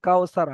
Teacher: ওয়াও লিনকে নরম আওয়াজে তাড়াতাড়ি পড়তে হবে, টান দেওয়া নিষেধ